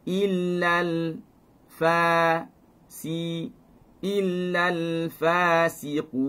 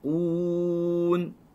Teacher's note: Bila mati, maka mulut akan kembali kepada kedudukan asal. Ketika dhammah kita muncung, bila mana sampai kepada huruf nun, itu kita matikan kerana wakaf, maka dia akan kembali kepada kedudukan asal.